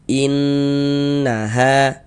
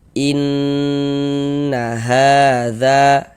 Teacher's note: Karena dia gunnah maka cara membacanya digunnahkan atau didengungkan. Jadi di bagian in, suaranya itu kita tahan, kita panjangkan sejenak. Innaha, nanya pendek ya, jangan dibaca inna, nanya pendek, innya yang kita tahan, yang kita panjangkan sejenak, kita gunnahkan. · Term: ghunah musyaddadah, gunnah musyaddadah